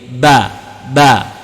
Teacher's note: Ba makhrajnya berasal daripada bibir, syafatani, bibir.